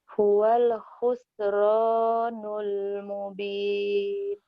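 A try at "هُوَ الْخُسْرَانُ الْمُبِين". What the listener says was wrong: Bagus, nggak apa-apa. Terus tinggal kho-nya dilatih nih, ada kho lagi di sini.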